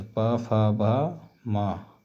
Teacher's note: ओष्ठ दोनों ओठों से